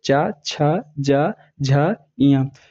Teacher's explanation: जब आप च वर्ग का उच्चारण करेंगे तो आपकी जीवा जो है तालु को स्पर्श करेगी। आपकी जीवा तालु को स्पर्श करेगी जैसे मान लीजिए आपका ये तालु है, ये हमने ये तालु ले लिया और ये जीवा है।